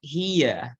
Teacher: the I is longer in duration and forms the nucleus of the diphthong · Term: diphthong I